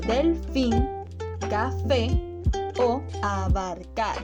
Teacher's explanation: También tenemos las palabras agudas, que son aquellas que tienen la sílaba tónica en la última sílaba, como por ejemplo delfín, café o abarcar.